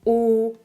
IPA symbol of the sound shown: o